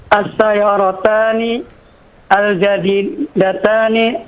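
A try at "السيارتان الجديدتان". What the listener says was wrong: Iqra bil wasal, iqra bil wasal. Baca dengan sambung ya.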